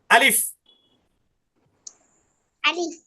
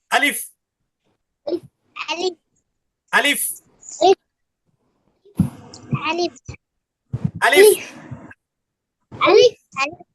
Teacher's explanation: হা করার সময় আমাদের মুখের যে খালি জায়গাটা দেখা যায়, সেই খালি জায়গা থেকে আলিফ উচ্চারিত হবে।